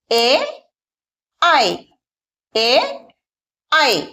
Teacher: ఈ లెటర్స్ ని పలికేటప్పుడు సౌండ్ కంఠలో నుండి వస్తుంది మరియు తాలుని టచ్ చేస్తుందన్నమాట మన నాలుక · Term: కంఠతాలు